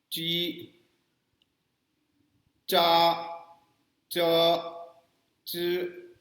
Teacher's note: ये जो ध्वनियां हैं Z H, C H, S H, ये थोड़ी सी अलग हैं च छ से, इसलिए कि जब हम च छ बोलते हैं हिंदी का नॉर्मल च छ तो ये तो तालु से बोलते हैं, लेकिन ये जो ध्वनियां हैं वहाँ पे बोलते समय जो हमारी जुबान है ये तालु के आसपास ही थोड़ी देर के लिए खड़ी रहती है।